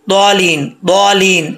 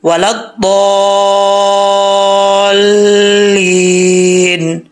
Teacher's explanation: दौद को लंबा करके लाम के साथ कनेक्ट करें, फिर आगे पढ़ें।